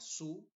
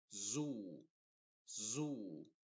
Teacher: sonido de la z inglesa no lo tenemos en español pero se pronuncia como una s solamente que se hacen vibrar más las cuerdas vocales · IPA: /zuː/